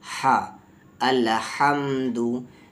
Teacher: हा को बीच वाले हलक से बोलना है, हम नहीं, उर्दू वाला हम नहीं